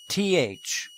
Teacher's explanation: the breath is blocked by the tongue the tip of which is firmly against the top front teeth